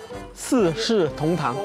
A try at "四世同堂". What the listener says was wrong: 四 ， 第 一 个 不 用 翘